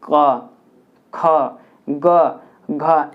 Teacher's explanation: क वाले ग्रुप को कंठ से करते हैं